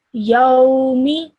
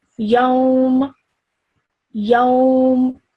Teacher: You would make the last letter, which is the meme in this case, mute. So you would stop the sound right there at the meme, okay? So you wouldn't pronounce the kasra.